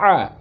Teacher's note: Ain fathah dibaca a. Keluarnya juga dari kerongkongan, tapi bagian tengah. Namanya tengah kerongkongan, wasatol halqi.